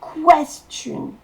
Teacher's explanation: Et la syllabe accentuée, c'est quest.